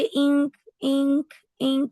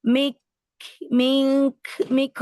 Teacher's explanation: गुना की आवाज अगले हर्फ में मिक्स तो हुई है